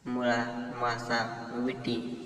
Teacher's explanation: दीर्घांतापूर्वीचे स्वर हे ऱ्हस्व उच्चारले जातात.